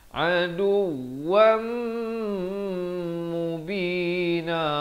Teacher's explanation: Di sini masuk berserta dengung daripada aduwan jadi aduwam. Tapi jangan lupa dengungkan dua harakat.